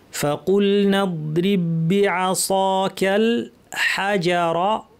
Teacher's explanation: ফাকুলনা বলার সময় ফা যেন স্পষ্ট ফ্যাস ফ্যাসে, প্রচুর আওয়াজ, প্রচুর বাতাস থাকে। কু ভারী, লাম এটা পাতলা, এই জন্য কুল বলবো না, কুল।